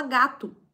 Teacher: A gente fala gato, parece u, mas é o.